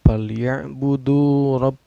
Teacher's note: Ro-nya ini tafkhim karena ro berbaris patah ya.